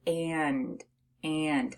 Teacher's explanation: when you have a short a and an N it sounds like it's coming through your nose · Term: nasalized a